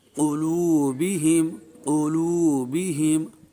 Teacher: قاف کو موٹا اور ان کی جو حرکات ہیں ان کو معروف پڑھیں گے۔